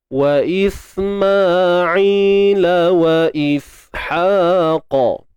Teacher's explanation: matikan je sin, lidah tak perlu keluarkan, duduk dalam je.